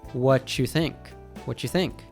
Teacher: He actually dropped the word do altogether. When you is preceded by a word ending in T, it usually morphs into a chu sound. So what do you becomes what you. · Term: connected speech